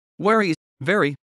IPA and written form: ˈvɛrɨ (Wery)